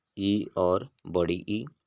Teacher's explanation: तालव्य जो होता है यानी तालु की सहायता से ई और बड़ी ई